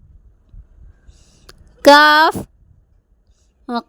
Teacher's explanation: ഈ അക്ഷരം കാഫ് നേരത്തെ നമ്മൾ പഠിച്ച ഖാഫ് ഇല്ലേ, ഖാഫ് മഖ്റജിനോട് അടുത്ത് അല്പം വെളിയിലുള്ള ഭാഗം, നാവിൻ്റെ ചുവടും വായിൻ്റെ ഭാഗത്തുള്ള അണ്ണാക്കിൻ്റെ ചുവടും